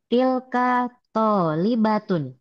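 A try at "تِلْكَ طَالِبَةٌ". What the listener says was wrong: Ahsanti tilka tolibatun. Oke, ahsanti.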